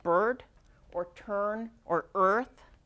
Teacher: Have you noticed that with some vowels like bird or turn or earth, you don't hear the vowel, you just hear er? Okay, well, we notice that in English phonetics that sometimes the vowel gets swallowed up by the er. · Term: controlled vowels